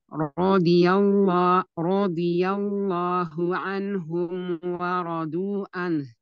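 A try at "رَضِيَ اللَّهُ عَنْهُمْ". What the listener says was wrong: Iya, huruf dotnya boleh tebalkan lagi Umi. Radhi Ya, ditebalkan huruf dot. Radhi. Radhiyallahu anhum wa radu an. Wa radu an.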